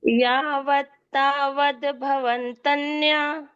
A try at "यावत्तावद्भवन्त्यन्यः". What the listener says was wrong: हाँ, यहाँ पर थोड़ा सा काठिन्य है, तन्या नहीं त्यन्यः। भवन्त्यन्यः, भवन्त्य। हाँ, भवत्यन्य नहीं, भवन के बाद वो न भी है, भवन्त्यन्यः।